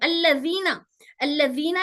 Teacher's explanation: वो जाल हमारे दांतों के ऊपर के दांत के किनारे को टच होकर जबान थोड़ी सी बाहर आती, तो वहां से जाल अदा होता